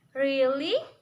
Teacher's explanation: And to sound surprised, you often make rising tone longer. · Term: rising falling tone